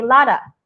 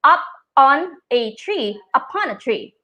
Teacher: you kind of connect the words together so that it sounds like one word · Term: liaison